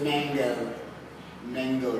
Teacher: The man is stressed because it takes more muscular energy. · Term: stressed syllable